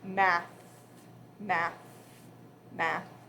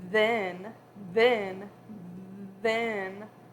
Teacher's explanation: you feel that vibration when you say the word then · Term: voiced